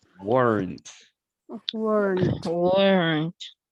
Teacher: Es una mezcla del sonido de la R, del sonido de la N y el sonido de la T. Pero allí no vamos a decir la E, como por ejemplo, weren't.